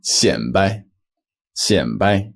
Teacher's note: The original character is a third tone, 摆, but pronounced here as a fifth tone.